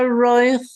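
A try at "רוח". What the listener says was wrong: it's not roich, it's ruch. It's just an u.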